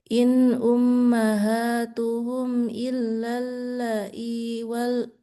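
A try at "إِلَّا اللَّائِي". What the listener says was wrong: Panjang. Panjang. Lai. Panjang.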